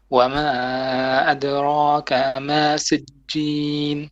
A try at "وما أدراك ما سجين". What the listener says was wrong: أدراك. Kaf is a short vowel.